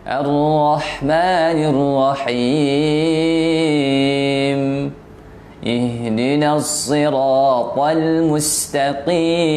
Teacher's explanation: mim ini itu dalam bentuk ada suara getaran hidung yang itu seukuran getaran hidung saja, nggak perlu lama-lama.